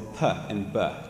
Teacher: are involved so p is voiceless and B is voiced uh both happen at the tip of your mouth at your lips